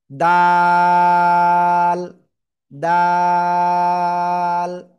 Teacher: জিহ্বার আগা, এই উপরে দুই দাঁতের গোড়ায় লাগান, লাগান, লাগিয়ে আপনার তিন আলিফটা নিয়ে উচ্চারণ করতে হবে।